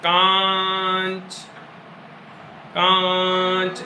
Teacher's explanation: अब इसका जब हम उच्चारण करेंगे तो हवा जो है नाक और मुंह दोनों से बाहर निकलेगी। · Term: चंद्रबिंदु